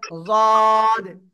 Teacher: জিব্বার গোড়ার কিনারা উপরে মাটির দাঁতের গোড়ার সাথে লাগিয়ে জদ, তিন আলিফ টেনে পড়তে হবে।